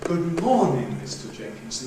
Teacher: Mr. Jenkinson, vocative, doesn't get an accent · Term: tail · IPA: ˈGood _ˋmorn_ing, ∘Mr ∘Jenkinson.